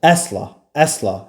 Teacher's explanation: əsla sözündə vurğu əvvələ gəlir